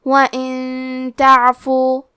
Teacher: ہم نون ساکن کو چھپاتے ہوئے اور غنہ کے ساتھ یہ حکم کو ادا کریں گے